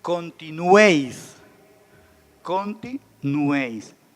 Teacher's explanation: Si se dan cuenta, en una sola sílaba estamos encontrando 3 vocales. Y esas 3 vocales juntas forman el triptongo.